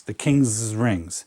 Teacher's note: Just sort of stretch that S out a little bit